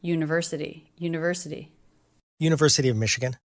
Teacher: And the T is a flap T.